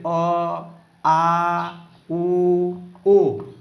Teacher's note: जुन स्वरवर्णको उच्चारण गरिदा जिब्रोको पछाडिको भाग सक्रिय हुन्छ भने त्यो स्वरवर्णहरूलाई के भनिन्छ, पश्च स्वर भनिन्छ